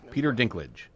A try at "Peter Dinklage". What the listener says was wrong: I thought you said Peer Dinklage. That was like one word, Peer Dinklage. Peter Dinklage.